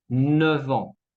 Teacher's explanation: La F se cambia en V, V, sonido de la V